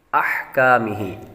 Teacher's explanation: अहकामिही, अह यहाँ पर हा की आवाज़ निकालेंगे, काफ बारीक है और आखिर में हा को भी लंबा करेंगे